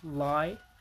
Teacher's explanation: We have lateral approximates L as in lie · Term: lateral approximants